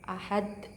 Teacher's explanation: terletak di akhir sehingga sukunnya karena berhenti di akhir Hadi bacaan cara bacanya dipantul dengan besar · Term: qolqolah kubro